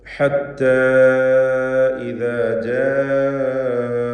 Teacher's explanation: ഹത്ത എന്നതിലെ ദീർഘം, ഇത് മദ് മുൻഫസിൽ ജായിസ് എന്ന ദീർഘമാണ്. 4 or 5 ഹറക്കത്തിൻ്റെ അളവിൽ അലിഫിനെ ദീർഘിപ്പിക്കേണ്ടതാണ്. അലിഫിന് ശേഷം അടുത്ത പദത്തിൻ്റെ ആരംഭത്തിൽ ഖതഇൻ്റെ ഹംസ വന്നതാകുന്നു, ഹംസ ഉച്ചരിക്കപ്പെടുന്നതാകുന്നു ഈ ദീർഘം വരുവാനുള്ള കാരണം.